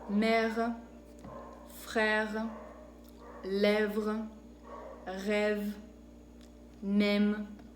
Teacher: Después tenemos el sonido E, que es un sonido abierto